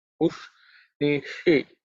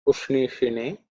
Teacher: the sh is cerebral sh, where the tongue has to be raised up towards the roof